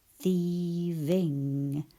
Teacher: my teeth are at the back of my bottom lip, but there's vibration to let me know it's a V